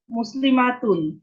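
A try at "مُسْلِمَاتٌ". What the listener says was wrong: না, টানা টানা যাবে না। হ্যাঁ, দ্রুত বলতে হবে ম্যাডাম, বলেন তো মুসলিমাতুন। আমার মতো বলেন না, ওই মিমে হালকা একটু টান হয়ে যাচ্ছে। হ্যাঁ, তাহলে আমরা মুসলিমাতুনকে নিয়ে আসলাম, কোথাও কোনো মাদ নাই।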